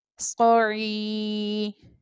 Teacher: یا مدہ ہو رہا ہے اس لیے ہم یہاں پر کھینچ کر پڑھیں گے